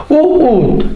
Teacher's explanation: ठीक है, तो देखिए उ ऊ बोलने पे हमारे होंठ कैसे हुए? दोनों होंठ आगे की ओर वृत्त का रूप ले लेते, गोल हो जाते हैं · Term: वृत्तमुखी